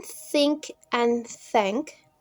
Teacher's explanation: Air passes through a narrow gap between the tongue and the upper teeth without vibration of the vocal cords.